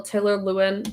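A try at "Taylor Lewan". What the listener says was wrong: Okay, you said Lewin. I just haven't heard that before.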